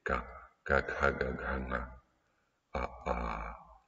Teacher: le premier point d'articulation, c'est la gorge, qui va donc produire les sons dits gutturaux de la gorge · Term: sons gutturaux